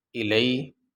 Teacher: آگے یہ حمزہ کے نیچے زیر ہے اور لام کے اوپر زبر ہے، اس کے بعد یا ساکن ہے۔ یا ساکن سے پہلے زبر آ جائے تو اس کو حروف لین کہتے ہیں، اور حروف لین کو لمبا نہیں کیا جاتا